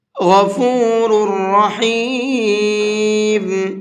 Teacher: غین کو بھی منہ بھر کے پڑھیں گے، اور یہاں پر 2 را ہیں، دونوں را کو بھی منہ بھر کے پڑھیں گے